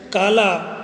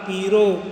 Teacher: ल के स्थान पे रे का उच्चारण होता है। यानी कि जहाँ ल बोला जाता है खड़ी बोली में या हिंदी में, उस ल को ब्रज भाषा में रे की तरह उच्चारित किया जाता है।